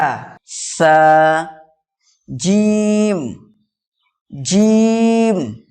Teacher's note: জিহববার মাঝখান এবং তার বরাবর উপরে তালের সাথে লাগিয়ে উচ্চারিত হয় জিম